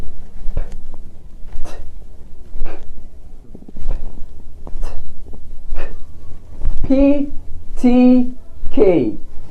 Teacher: دول 3 اصوات ما بيعملوش اي اهتزاز للاحبال الصوتية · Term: voiceless